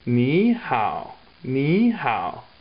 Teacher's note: two third tones together first one becomes second tone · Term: 2 third tones